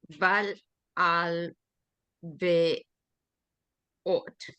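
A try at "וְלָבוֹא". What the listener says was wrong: Velavo. Well, there's no tav, is it? Velavo.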